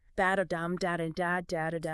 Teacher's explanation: Shakespeare wrote in iambic pentameter. That's 10 syllables per line, alternating unstressed and stressed beats.